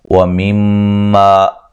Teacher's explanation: میم مشدد پہ غنہ ضروری ہے، الف مدہ ہے۔